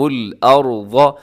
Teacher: ارض میں را ساکن ہے اور را سے پہلے زبر ہے تو را موٹی پڑھنی ہے، ضاد بھی موٹا پڑھا جائے گا۔